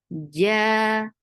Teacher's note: And there shouldn't be any ch sound in jim.